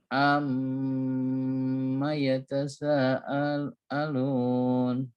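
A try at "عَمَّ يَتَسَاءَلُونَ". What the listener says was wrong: Sanya berubah lagi, kurang panjang. Ini sa maka sanya jadi 5.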